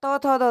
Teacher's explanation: तौ थौ दौ ध वाले को दंत से कहते हैं।